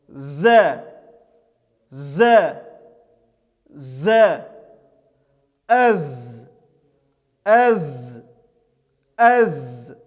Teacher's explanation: приближается к верхнему нёбу в образовавшуюся щель не произносится этот звук это звук является таким образом щелевым звонким с участием голоса · Этот звук является таким образом щелевым, звонким, с участием голоса и является мягким. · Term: Заюн